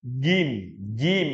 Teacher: dari pertengahan lidah bertemu dengan langit-langit atas